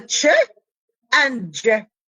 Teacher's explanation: Delayed, because you have the stop, t is stop, total blockage of the air, but it is released at the end because of the palatal fricative, which is sh. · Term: double articulation